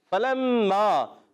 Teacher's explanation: فا کی ادائیگی ہوتی ہے اوپر والے دانتوں کے کنارے جب نیچے والے ہونٹ کے تر حصے سے لگتے ہیں تو ادا ہوتا ہے فا، فا حروف شفویہ میں سے فا، با فا میم واو، ان کو کہتے ہیں حروف شفویہ۔